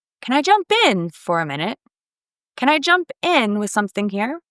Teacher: Stress the preposition in in this phrasal verb.